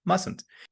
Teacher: There's no Z sound in mustn't. It's a s mustn't.